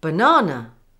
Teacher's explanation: The second syllable, na, is pronounced with stronger stress, and the first and third syllables, which are weak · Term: primary stress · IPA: /bə-ˈnɑː-nə/